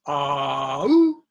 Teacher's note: Ow, the tongue has to move up.